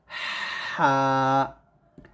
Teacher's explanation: হরফ গুলো খুব সুন্দরভাবে পারেন তো বিশেষ করে আপনারা এই হাটা উচ্চারণ করবেন গলার মাঝখান থেকে চিকন করে